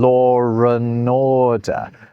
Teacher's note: you end up sort of putting a r sound in the middle of there, even though there isn't one? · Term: intrusive r